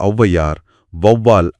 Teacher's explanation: >> சரி >> ஆனா அது சொல்லோட முதல்ல வரும்போது எடுத்துக்காட்டா அவ்வையார் வவ்வால் அப்படிங்கற சொற்களை எடுத்துக்கிட்டோம்னா அவாரம் தனக்குரிய இரண்டு மாத்திரையிலிருந்து குறைஞ்சு ஒன்ரை மாத்திரையா ஒலிக்கும் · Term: அவகார குறுக்கம்